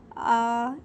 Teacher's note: अलिफ का मखरज है मुंह का खाली हिस्सा।